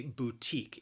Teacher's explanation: It has 2 syllables. The stress, again, is on that second syllable.